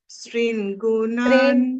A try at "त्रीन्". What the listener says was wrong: स्त्रीन स्त्रीन नहीं है, त्रीन हाँ वो स्त्री नहीं है, हाँ वो त्रीन है, वो स को हमको ड्रॉप करना होगा।